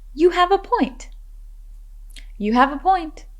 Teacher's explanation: remember to emphasize the words have and point